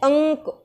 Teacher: जो अनुस्वार है इसका उच्चारण होता है नाक से और इसका उच्चारण आधा म के जैसा होता है